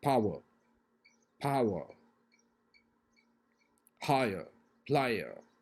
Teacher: they are combination of three vowels so sound will be the vowel sound it will glide from